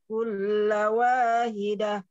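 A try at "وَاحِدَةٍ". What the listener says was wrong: Hidah atau haidah? Hak tipisnya ini lagi, makhrajnya tepatkan lagi ke tenggorokan tengah.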